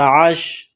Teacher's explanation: عین گلے کے درمیان سے زور لگا کر عین کو نکالیں گے۔ عین پر زبر ہے، اس کے بعد شین ہے، شین کا مخرج زبان کا بیچ سامنے والا تالو، اس سے شین ادا ہوتا ہے اور شین پر جزم ہے۔